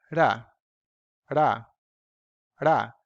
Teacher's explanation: It's not a thrill, like it's not ra, it's ra, just a flap like this. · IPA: [ɾ]